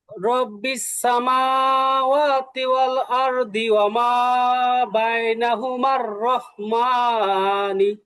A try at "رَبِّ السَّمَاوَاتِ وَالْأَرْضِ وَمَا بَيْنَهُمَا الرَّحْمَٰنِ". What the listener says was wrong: হ্যাঁ, এই তো মাশাআল্লাহ, ঠিক আছে।